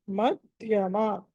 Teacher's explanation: మధ్యమ థ మహాప్రాణం ఒత్తి పలకాలి